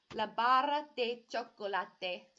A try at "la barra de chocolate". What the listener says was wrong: Can you do a little bit of a roll on the tongue for the 2 R's?